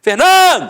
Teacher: Então você mata que a penúltima sílaba é a sílaba tônica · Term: paroxítona